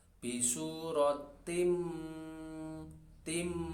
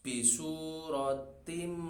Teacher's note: suara tanwin itu tidak dibaca atau terlebur atau masuk ke huruf setelahnya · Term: idgham